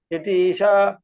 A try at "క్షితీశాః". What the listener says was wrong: విసర్గలు ఒకవేళ గ్యాప్ చేస్తే క్షితీషాః అనాలి.